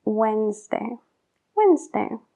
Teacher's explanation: en la palabra wednesday no se pronuncia la d bajo ningún caso